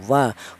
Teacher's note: Huruf wau kelnya huruf berasal dari kedua bibir yang renggang